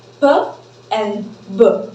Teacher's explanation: the closure is formed with both my lips